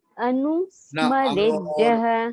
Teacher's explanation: विसर्ग जब अंत में रहता है तो उसका प्रोनाउंसिएशन ह की माफिक होता है